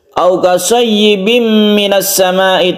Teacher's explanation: tanwin bertemu dengan mim idgham bi gunnah, kita baca panjang, kita baca dengung